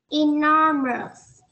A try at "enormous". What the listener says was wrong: Mình sửa cho cô nào. Enormous. Ở phía sau nó có S này.